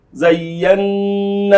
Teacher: اظهار الغنه عند النون المشدده